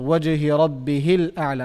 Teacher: I'm saying rabbihil. I'm going straight to lam. But if I start with it, al, I have to pronounce it. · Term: Hamzatul wasl